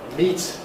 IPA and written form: miːt (meat)